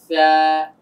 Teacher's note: জিহ্বার আগাটা এসে দাঁতের আগার সঙ্গে লাগবে, জিহ্বা যেন বাহিরে বের না হয়